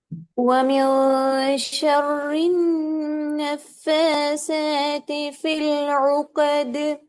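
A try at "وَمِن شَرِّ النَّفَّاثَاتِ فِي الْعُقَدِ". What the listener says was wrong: நஃபாசாத்தி அல்ல. ஃப இந்த சவுண்ட் சரியா வரணும். நஃபாசாத்தி சேட சவுண்ட் வரப்படாது.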